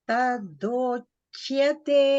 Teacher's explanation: That ch should also not become sh.